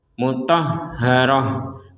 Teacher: Kalau kita berhenti sebagaimana penjelasan sebelumnya, kalau kita berhenti di tak marbutoh, maka tak marbutoh ini menjadi huruf ha